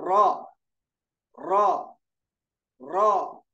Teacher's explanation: 11वां मखरज ज़ल्क़ी, नोके जबान की पीठ और ऊपर के दरमियानी दांतों के मसोड़ों से एक हर्फ रॉ निकलता है। · दांत के अंदर जो मसोड़े होते वहां से निकलेगा रॉ